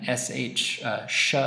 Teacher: involves some rounding of the lips and the tongue a little further back than when it was for the s also air only going through the mouth and no voicing of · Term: sh sha sound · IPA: /ʃ/